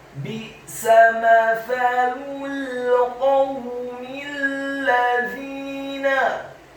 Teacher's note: huruf qafnya dibaca tafkhim tebal, fathah 1 harokat